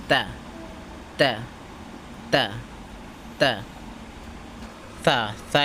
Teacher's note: জিহ্বার আগা সামনের উপরে দুই দাঁতের গোড়ার সঙ্গে লাগাইয়া উচ্চারিত হয়।